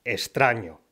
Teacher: la pronunciación de la x seguida de consonante se suele simplificar en s